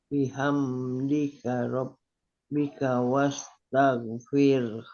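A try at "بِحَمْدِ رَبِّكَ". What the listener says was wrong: Tidak ada bihamdika. Bihamdika tidak ada k-nya di sana.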